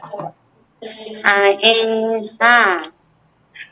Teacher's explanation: 2 number মাখরাজ হলকের মধ্যখান হইতে আইন হা